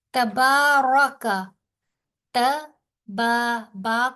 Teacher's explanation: با کو 2 حرف کے برابر کھینچیں گے کیونکہ اس کے اوپر کھڑی زبر ہے